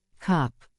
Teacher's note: your mouth opens just a bit and the sound is short and relaxed